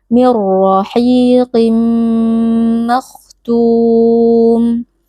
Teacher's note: tanwinnya atau bunyi nun sukun yang ada pada tanwin ini rahiqin kita masukkan ke dalam huruf mim dan mim menjadi huruf bertasydid lalu kita baca dengan berdengung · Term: Idam ghunah